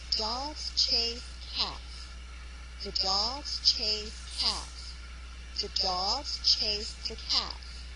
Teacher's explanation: each sentence has three stressed syllables. Dogs, chase, and cats. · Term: stress-timed